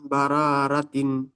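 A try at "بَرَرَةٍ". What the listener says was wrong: বা র, এই রটি একটু টান মতো হয়ে যাচ্ছে, টান হবে না। হির মিম বা র, র তিন।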